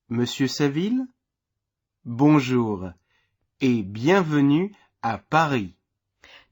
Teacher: note the rising intonation at the end of the name listen again and in the pause copy that Rising intonation here's